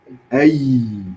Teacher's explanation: The ya, much like the sheen, comes from the middle of the tongue. The difference being in articulation is that there's more room for the air to flow.